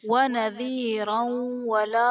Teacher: وَنَذِيرًا وَلَا میں را پر دو زبر کی تنوین، تنوین کے بعد حروف یرملون میں سے واو آ رہا ہے تو یہاں بھی ادغام مع الغنہ کا قاعدہ ہوگا، یعنی تنوین میں ہم غنہ کر کے پڑھیں گے